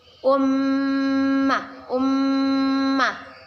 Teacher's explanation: mim bertasydid kita baca dengan berdengung dan ditahan dua harakat